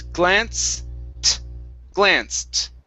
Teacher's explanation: here we have an ed ending so instead of saying glanced this is glanced end with the t sound glanced okay give me a t okay so it's glance glanced